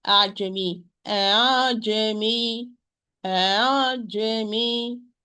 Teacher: we are going to pronounce the Hamza somewhere between the Hamza and the natural mad alif. Ajami, Jamie, this is the tasheel or easiness of the hamza.